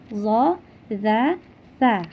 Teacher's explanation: depan kita ya teman-teman kemudian huruf do d dan sa ya keluar dari ujung lidah ujung lidah agak sedikit keluar Kemudian bertemu dengan gigi seri atas kita atau gigi depan kita ya teman-teman D dza Tsa ya dikeluarkan